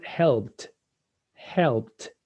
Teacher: no vibration so it's the t